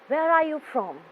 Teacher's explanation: as it is a wh question your voice will be going down towards the end of the question